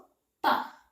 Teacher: பா உச்சரிக்கிறதுக்கு என்ன பண்ணணும், 2 உதடும் ஒட்டணும். 2 உதடும் ஒட்டினாதான் பான்ற சவுண்டு வரும்.